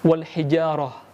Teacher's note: Nah jangan lupa ketika kita melafalkan ta marbutoh, ketika dimatikan maka berubah menjadi ha sukun.